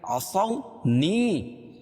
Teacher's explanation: یا ساکن سے پہلے زیر ہو تو یا مدہ اس کو ایک الف کے برابر کھینچ کے پڑھیں گے